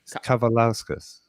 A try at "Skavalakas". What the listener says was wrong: There's an S before the K.